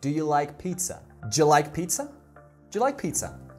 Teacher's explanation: Do you like pizza? Gets reduced to do ya, or ja.